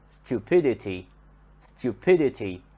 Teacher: we notice that the stress here comes on the syllable that is before the suffix